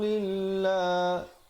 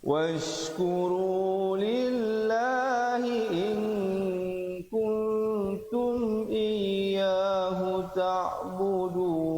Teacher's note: lafz jalalah dibacakan dengan nipis di situ 2 harakat.